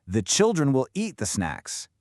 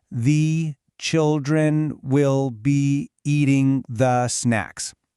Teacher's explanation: the rhythm is locked onto those 3 strong beats, and all the other little words just get squeezed in between